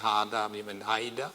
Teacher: Et je le traduis pour mes amis, un peu sans respect, Großbrunndorf, ça veut dire village au grand puits. Mais la voyelle A longue ou E longue en libanais, ou arabe palestinien en général, a tendance à devenir diphtongue